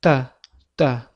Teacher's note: tilimiz tepa tishimizni ortki tarafiga biroz tegib turadi. Ya'ni tish ortidan talaffuz qilinadi. O'zbek tilidagi t harfi kabi.